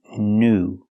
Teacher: With the word new, we see the most common pronunciation of EW. It's pronounced oo. The long oo sound like food and moon.